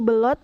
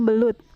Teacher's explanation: fonem U diucapkan menjadi O. Contoh salahnya yaitu belot, yang benarnya yaitu belut.